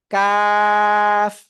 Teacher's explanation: জিহ্বার গোড়া থেকে একটু আগে বাড়িয়া উচ্চারণ করব কি চিকুন আওয়াজে